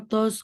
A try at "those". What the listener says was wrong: Bukan those. Tadi pakai T ya baca those.